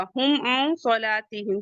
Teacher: یہاں پہ اظہار شفوی ہوگا، اور عین کے بعد نون ہے، نون ساکن ہے، اس کے بعد صاد آ رہا ہے تو یہاں پہ اخفا ہوگا